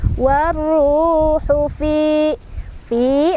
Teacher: Warru, ru mad tabi'i karena dhammah bertemu waw sukun, dibacanya panjang 2 harokat. Warruhu fi mad tabi'i lagi, kasrah bertemu ya sukun, bacanya panjang 2 harokat